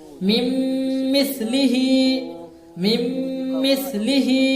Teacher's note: نون ساکن کو میم سے ملا کر غنہ کے ساتھ پڑھیں گے